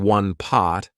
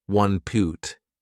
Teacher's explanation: Instead of saying one pot, I said one poot.